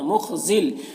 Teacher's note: خا کو پر پڑھیں گے، یہ حروف مستعلیہ میں سے ہے، یا میں کوئی حرکت نہیں، اس کو نہیں پڑھنا ہے.